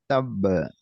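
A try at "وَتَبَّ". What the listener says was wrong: Nah, jangan terlalu lama juga. Wa tab. Nah, itu terlalu lama.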